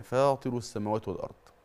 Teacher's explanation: فاطر دي مد طبيعي حركتين فقط، وما ينفعش زود المد عن كده